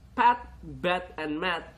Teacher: At the initial sounds in the words pat, bat, and mat are all bilabials. P is voiceless, while B and M are voiced.